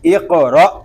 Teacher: آگے حمزہ ساکن ہے، اس کو جھٹکا دیں گے، اس کو را کو ہم کھینچ کر نہیں پڑھیں گے · قاف پر قاف ساکنہ میں کلکلا، را پر حمزہ ساکنہ میں جھٹکا